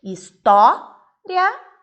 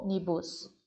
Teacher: na palavra história nós temos o o mais aberto e o ônibus eu tenho o mais fechado